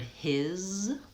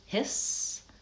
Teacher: the word his, that's voiced, the S says Z, his. The word hiss, that's voiceless, the S says S.